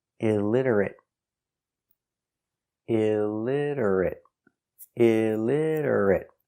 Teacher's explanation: Stop t at the end.